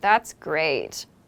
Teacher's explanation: when someone is using sarcasm they might use a low tone